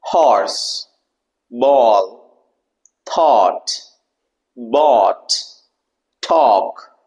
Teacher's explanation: Automatically your mouth and your tongue, it is slightly rounded, bringing into O shape.